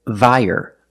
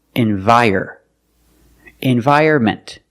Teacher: The first syllable is not stressed, so you can pronounce it environment. The second syllable is stressed. We pronounce it vire, like fire or tire. Together, envire.